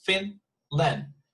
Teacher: the stress is at the beginning you see